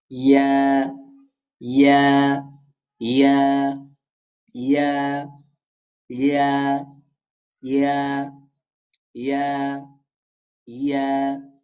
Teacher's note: জিহ্বার মধ্যখান তার বরাবর উপরের তালুর সঙ্গে লাগাইয়া ইয়া উচ্চারিত হয়।